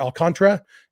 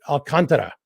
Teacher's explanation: the emphasis is on the con